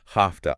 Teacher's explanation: the V sound changes to an F sound before the T. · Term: Voicing assimilation